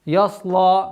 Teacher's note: Я мягкий, сад твердый, лям мягкий.